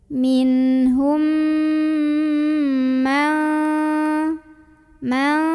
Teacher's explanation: ada mim sukun bertemu dengan huruf mim berharakat maka cara membacanya mim yang sukun dimasukkan ke mim kedua atau dileburkan sambil kita dengungkan dulu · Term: idgham mimi